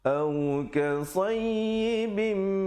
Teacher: Maaf, bukan wajibul gunnah, idgham bi gunnah. Tanwin bertemu mim, dengungkan 2 harakat.